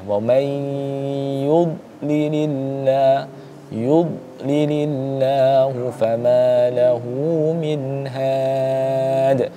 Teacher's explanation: Huruf dod itu bukan kemudian termasuk dalam huruf qalqalah. Jadi jangan dipantulkan sama sekali ya.